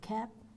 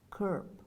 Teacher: Horizontal movement of the tongue, front versus central.